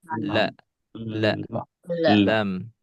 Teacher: Ujung lidah bertemu dengan gusi A atas. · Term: huruf lam